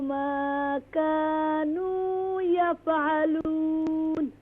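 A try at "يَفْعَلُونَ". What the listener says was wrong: यफ़अलून, don't do क़लक़ला on the qaf.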